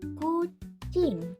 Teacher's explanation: K di awal kata diucapkan dengan cara letupan dari belakang mulut. Setelah bunyi K, langsung sambung dengan bunyi vokal U. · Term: letupan K